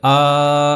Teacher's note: تو ہم نے کھڑا زبر کو لمبا کرنا ہے 1 سے 2 الف